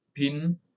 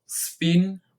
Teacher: the letter P sound different in the word pin with a puff of air compared to the word spin without air